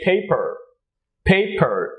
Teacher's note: a native english speaker could say paper paper with the r at the end sounding